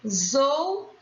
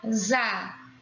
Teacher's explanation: Então, perceba que o S está entre a consoante e a vogal. O S entre duas vogais tem som de Z.